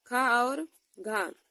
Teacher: खा और घा हमारे महाप्राण हो जाएंगे